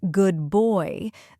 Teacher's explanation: the d in good might sound like a b because it blends with the b in boy. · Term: Assimilation